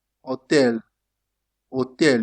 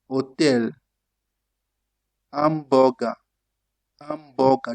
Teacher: Also keep in mind that the H is silent in Italian.